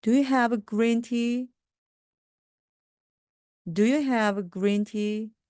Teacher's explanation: do로 시작하기 때문에 끝부분이 올라갑니다.